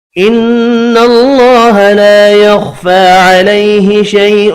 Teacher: نون مشدد پر غنہ کریں گے. اللہ کا نام زبر کی وجہ سے پر پڑا جائے گا. الف مدہ کھڑی زبر ایک ایک الف کی مقدار میں کھینچ کر پڑھیں گے.